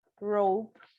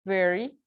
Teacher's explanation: er er is voice sound is a ritual flex retroflex and the place of articulation is that post-alveolar